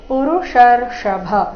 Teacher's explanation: ಪುರುಷರ್ಷಭ ಈ ಶಬ್ದದಲ್ಲಿ ಕೊನೆಗೆ ಭ ಮಹಾಪ್ರಾಣ ರಸ್ವ